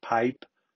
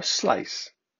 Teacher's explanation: when the vocal folds are not vibrating we produce voiceless sounds like the first and last sounds in pipe tight or slice